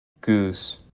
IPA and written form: gʉs (GOOSE)